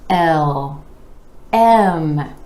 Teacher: we start with that e vowel sound dropping the jaw just a bit um bringing the lips together for the um